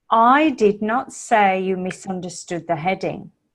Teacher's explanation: because I'm stressing the word I I it makes that important so I did not say you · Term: sentence stress